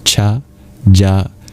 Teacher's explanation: Notice that those two sounds are in the same place in your mouth. Cha, ja. Ja is just a voiced version of cha.